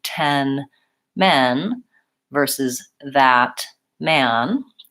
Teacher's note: saying the vowel in man my mouth is more open so all of these vowels happen in the front my tongue is forward in my mouth but for men and man the main difference is that man